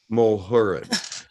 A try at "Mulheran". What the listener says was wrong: Mulhern, yes. The A is silent.